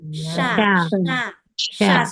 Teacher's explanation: titik Sya di tengah lidah dengan langit-langit